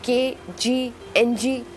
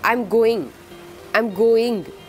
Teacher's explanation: but posteriorly than the others then they are called velar sounds specifically produced from soft palate and sounds like k g ng